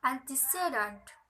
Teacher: there is usually secondary stress on the first syllable, no stress on the second, and primary stress on the third. The examples is antecedent.